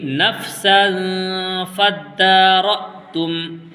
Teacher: وَإِذْ قَتَلْتُمْ نَفْسًا فَادَّارَأْتُمْ فِيهَا وَإِذْ قَتَلْتُمْ نَفْسًا فَادَّارَأْتُمْ فِيهَا، یہاں پر نون ساکن کے بعد اخفا کے 15 حروف میں سے فا آیا ہے، اس لیے یہاں پر اخفا کا قاعدہ ہوگا، یعنی اس کی آواز ناک میں چھپا کر کے پڑھیں گے